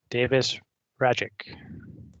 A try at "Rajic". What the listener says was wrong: It's Radek, just ignore the J.